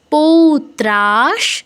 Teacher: বিসর্গের পর স এল তাই হাফ স